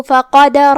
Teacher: کلمت فقدر میں یہاں حرف القاف ہے، قاف حروف التفخیم میں سے ہے تو ہم اسے بھاری آواز میں ادا کریں گے. جو کہ را پہ بھی زبر ہے تو یہاں را کا حکم ہے تفخیم، تو ہم را کو بھی بھاری آواز میں پڑھیں گے. اور جو کہ یہ پورے کلمہ پہ زبر ہے تو اس کا دھیان رہے.